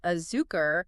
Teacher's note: the stress is on that second to last syllable